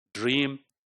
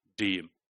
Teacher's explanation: So dream is more, there is a more lip rounding involved, but in the case of deem, there is no lip rounding.